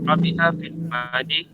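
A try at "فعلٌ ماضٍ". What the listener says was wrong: fi'lun madin. Dibaca juga dengan harakatnya ya. Fi'lun madin. Jangan dibaca madi. Fi'lun madin.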